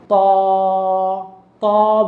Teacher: ঠোঁটটা স্বাভাবিক রাখবো, একটা মোটা ধ্বনি, জিহ্বাটাকে মোটা করে বলবো ত।